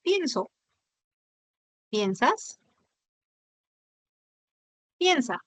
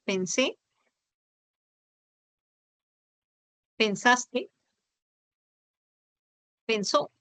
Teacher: Apareció el diptongo, pero en el pasado volvió a ser un monoptongo.